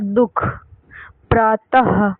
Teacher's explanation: अनुस्वार की तरह विसर्ग भी स्वर के बाद आता है और इनका उच्चारण हा की तरह होता है, जैसे दुख, प्रातः, तो लास्ट में हा आ रहा है या बीच में दुख ऐसा आ रहा है, हा का यहाँ उच्चारण हो रहा है।